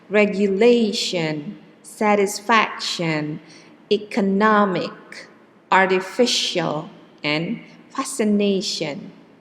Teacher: the stress is in the third syllables